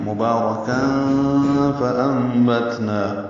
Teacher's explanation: مبارکن میں با کو 2 حرکات لمبا کریں گے، را کو جلدی پڑھیں گے لیکن پر پڑھنا ہے. مبارکن، کاف باریک ہے، تنوین کے بعد فا آنے کی وجہ سے اخفا ہے، یعنی تنوین کی میں نون ساکن کی جو آواز ہے وہ چھپائیں گے.